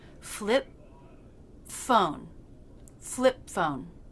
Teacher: the lips in position for the P, then go straight into the F consonant without releasing the P.